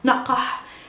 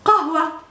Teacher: This is the real h in Arabic. Ha, aspirated and strong, and your vocal cords are vibrating, and it's after a qa.